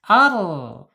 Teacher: Makhrajnya ada di alisan, yaitu di ujung lidah, ujung tepi lidahnya menyentuh langit-langit yang yang sejajar dengan gigi seri atas. Ar. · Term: ro